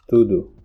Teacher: the sound O, whenever in unstressed syllables, changes to U